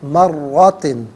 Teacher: را کو پر کر کے پڑھیں گے، مشدد ہے